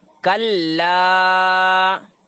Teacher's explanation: لام الف میں الف سے پہلے زبر ہے تو وہ الف مدہ، اسے کھینچنا ذرا